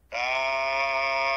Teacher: জিহ্বার গোড়ার একটু আগের তালুতে লাগবে স্বাভাবিক উচ্চারণ হবে